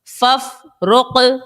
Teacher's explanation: قاف جو ہے یہ ساکن ہے اور حروف قلقلہ کا ہے، قاف تو خوب ظاہر کر کے ادا کر دیا. یا قاف پیش یق، را ضاد زیر رد، یق رد.